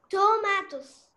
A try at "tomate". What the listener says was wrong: Tomate. Tomat, the S is silent. Tomat, yeah.